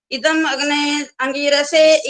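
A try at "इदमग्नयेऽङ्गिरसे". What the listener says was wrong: अभी फिर वही बोला, अग्ने अंगिरसे बोला। फिर मैंने अभी बोला था ये अ का उच्चारण नहीं करना होता।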